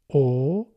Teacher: See I begin with o. My lips are round. O. And then I don't want to change this position because I don't want to waste energy.